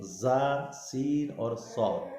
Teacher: زبان کی نوک اوپر کے دو دانتوں اور نیچے کے دو دانتوں کے اندرونی کنارے سے ادا ہوتے ہیں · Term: سیٹی والے